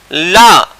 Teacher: ला इसको क्या बोलते हैं तो पार्श्विक ध्वनि बोलते हैं, और इसका उच्चारण होता है दंत या वर्त से या दंत मूल यानी मसूड़ों से।